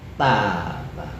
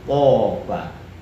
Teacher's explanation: Hanya saja kalau tak itu tidak tafkhim, tapi kalau tok toba tafkhim.